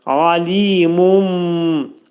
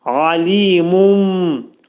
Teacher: Mun dedikdə nun bəyə yetişir mim şəklində deyirik. Alimum, ağız yumulur. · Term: iqlab